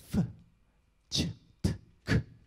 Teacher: Bunların hepsinde gırtlağımızda herhangi bir titreşimin gerçekleşmediğini görüyoruz. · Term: voiceless